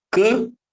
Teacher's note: a letra M ela não representa um som ela tá ali somente para nasalizar a letra anterior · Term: Nasalização